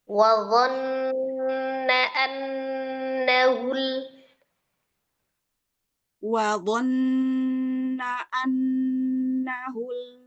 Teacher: sempurnakan lagi ghunnah nun , tapi na-nya pendek